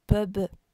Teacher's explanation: Ici, ils sont tous les deux bilabiaux. Mais l'un, P, n'est pas voisé, tandis que B, l'est. Il est sonore.